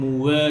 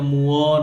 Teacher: এটাও খেয়াল করেন, মুওয়া যেন মুয়া না হয়। মুওয়া, ওয়াও পাতলা, সবসময় ঠোঁট গোল করে ওয়াও